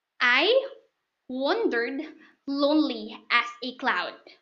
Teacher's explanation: there are four groups of unstressed stressed syllables